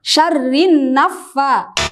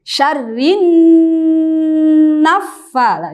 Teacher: Nun bertasdid hukumnya adalah gunnah yang dibaca sangat jelas gunnahnya